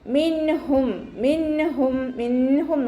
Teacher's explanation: നൂൻ സാക്കിനയെ വ്യക്തമാക്കി മണിക്കാതെ ഓതി കൊടുക്കുക. നൂനിൻ്റെ സൗണ്ടിനെ വ്യക്തമായിട്ട് കേൾക്കണം. മിൻഹും മിൻഹും മിൻഹും ഓതിയിട്ട് മണിക്കരുത്. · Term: ഇദ്ഹാറിൻ്റെ